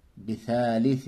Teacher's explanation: بثالث یہاں پر اخفا ہوگا، 2 زیر کی تنوین کے بعد حروف اخفا میں سے فا آیا. اخفا کہتے ہیں ناک میں تنوین نون ساکن کی آواز کو چھپانے کو، اور پھر اس میں غنہ بھی ہوگا، ناک سے پڑھیں گے بھی